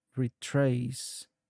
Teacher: The word is pronounced as retrace with the emphasis on the second syllable. The re is more like re, and then trace is nice and clear.